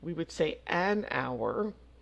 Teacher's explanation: even though hour starts with an H which is a consonant but the H is silent so it's really not the first letter it's the first sound